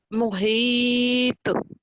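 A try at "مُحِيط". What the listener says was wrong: تھوڑا سا قا کے اوپر قلقلہ تھوڑا سا زیادہ ہوگا.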